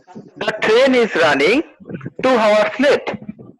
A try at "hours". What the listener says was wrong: Hours, not hours. Hours. H is silent. Hours. ইসটা খুব হালকা করে বলি, ইসটা এমফাসাইজ হবে না, ওই জন্য ইটালিক্স করা আছে.